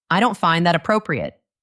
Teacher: You must say it with a flat, calm voice. No anger, no sadness. Your voice should be very steady, maybe even a little quieter than usual.